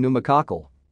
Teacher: Only the N sound in PN is pronounced